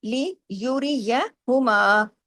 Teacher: اب را بھی یہاں باریک ہے، کیوں؟ را کے نیچے زیر ہے